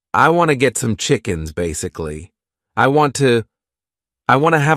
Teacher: But what's interesting about this clip is how pronounces want to as wanna. This informal contraction is incredibly common in spoken English.